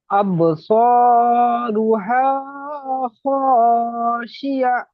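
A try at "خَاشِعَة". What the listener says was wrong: খাশিআহ, লাস্টে যে গোলতা আছে এই গোলতাটা হা হয়ে যাবে, খাশিআহ।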